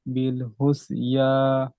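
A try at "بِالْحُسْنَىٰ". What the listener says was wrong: হুম, ইয়া কথা পাচ্ছেন ওখানে? খাড়া জবরটা নুনের উপরে। বিল হুসনা। নুন খাড়া জবর না হবে, ইয়া পড়তে হবে না, নুন পড়তে হবে।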